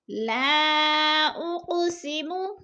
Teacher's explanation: اق پہ قلقلہ ہو رہا ہے، قاف کو ہلا کر پڑھنا ہے